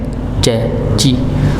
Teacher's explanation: Tengah lidah bertemu dengan langit-langit ya sama seperti syin Cuma bedanya kalau Jim dia nempel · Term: huruf Jim